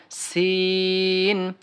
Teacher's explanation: সিন হরফটা পাতলা হবে সিন হরফটা কি হবে বাতাসের সাথে হবে